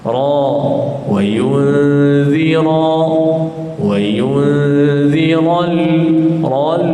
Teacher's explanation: Kemudian ra, selepas zal ra baris atas tebal. Ra, ada di kalangan kita membaca huruf ra walaupun berbaris atas bunyi nipis.